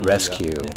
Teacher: rescue again the two syllables are registering with the same level of volume